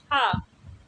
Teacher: हा देखिए ये कंठ से उच्चारित होता है, यानी कंठ ध्वनि है।